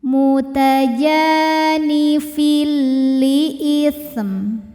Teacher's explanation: Karena ada tanwin kasrah menghadapi huruf lam, maka tanwinnya dileburkan atau dimasukkan ke lam tidak disertai dengung. Jadi ini cukup kita tekan saja. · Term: idgham bila gunnah, idgham bila ghunah